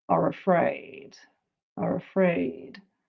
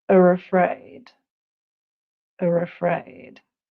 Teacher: this is the insertion of an R where there wouldn't usually be one